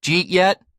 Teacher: Did you becomes jeet.